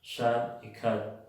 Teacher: Se puede pronunciar U o como una schwa, A. Por ejemplo, en el verbo should y could, que podría ser, al pronunciarlos de manera débiles, should y could.